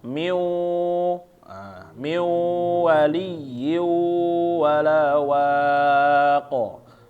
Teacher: Ada nunnya di sini, nunnya mungkin hilang, tetapi sifatnya ditahan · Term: sifat gunah